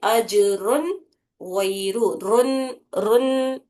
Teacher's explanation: نون کی آواز پوری آنا، اس پر غنہ نہیں کرنا ہے